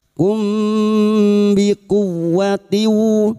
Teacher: Taina, na alif kecil di atas 2 harokat mad tabi'i. Nakumbi, mim sukun bertemu ba ikhfa syafawi, mim sukun kita baca samar dan kita denggungkan selama 3 harokat. Kumbi kuwatiu, ku masuk ke huruf wawu yang bertasdid, ku hanya masuk tanpa ditahan lama-lama.